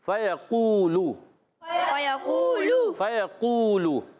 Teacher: فیقولو فا پر زبر یا پر زبر، حرکات نہیں کھینچیں گے. قاف و پیش قو واو ساکن سے پہلے پیش واو مدہ ہو گیا، ایک الف کھینچنا ہے. لام کی پیش کو نہیں کھینچیں گے.